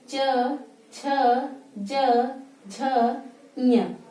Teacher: ये च वर्ग को बोलेंगे तो हमारी जो जिह्वा है वो ऊपर के तालू में जाकर चिपकती है। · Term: तालु वर्ग